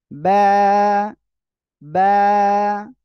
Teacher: দুই ঠোঁটের ভিতরে ভিজা অংশ থেকে এ অক্ষরটি উচ্চারণ হবে আর এ অক্ষরে এক আলিফ টেনে পড়তে হবে বা সবাই একসাথে